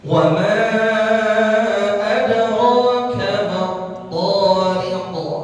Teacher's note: Ada qalqalah sughra pada huruf dal sakinah atau dal sukun